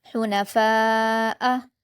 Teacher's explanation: فا پر الف مدہ ہے اور اس کے بعد حمزہ اسی کلمے میں ہے تو مد متصل ہوگا اور اس کو 5 حرکات کے برابر کھینچ کر پڑھیں گے